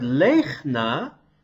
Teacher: So in the word lechna, we have two syllables, the first closed with a stressed long vowel in it. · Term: silent